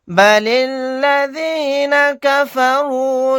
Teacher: لام کو لام میں ملا دیں گے، الف نہیں پڑھا جائے گا